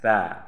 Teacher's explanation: Jadi makhraj ini, makhraj sa, hurufnya makhrajnya di ujung lidah dengan ujung gigi seri yang di atas